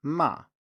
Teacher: we also have a fourth tone, which is a falling tone, ma.